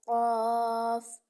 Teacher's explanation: जो कफ है दो नुतो वाला वह जुबान की जड़ और तालू के नर्म हिस्सा से अदा होता है